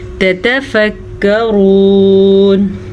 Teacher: لعلکم تتفکرون، لعلکم، آئین کو واضح کریں اور لام عین لام ان کی مقدار چھوٹی ہوگی کیونکہ ان کے اوپر زبر ہے۔ تتفکرون، را کو پر پڑھیں گے، را کے اوپر پیش کی وجہ سے